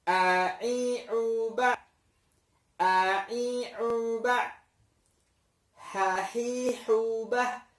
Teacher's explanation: Ha dengan ain ini keluar dari tenggorokan juga, tenggorokan bagian tengahnya, agak ke atasan dikit dari tempat keluarnya hamzah dan ha. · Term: ain dan ha